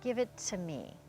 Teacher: really reduce the to so that the to will sound like ta.